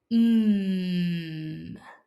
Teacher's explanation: To make the M sound, start by closing your lips tightly together. Then push air through your nose while keeping your mouth closed.